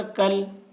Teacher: تشدید والے حرف کو دو مرتبہ پڑھیں گے، ایک مرتبہ پہلے والے حرف کاف سے ملا کر اور ایک مرتبہ خود اسے. کل، لام الف زبر لا، الف سے پہلے زبر ہے، الف مدہ ہوا اس لیے الف مدہ کو ایک الف کے برابر کھینچ کر پڑھیں گے.